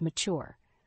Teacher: The word mature has two syllables, with the stress on the second syllable.